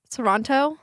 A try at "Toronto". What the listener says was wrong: Toronto. Where's the T? No, there's a T. Toronto. Yeah.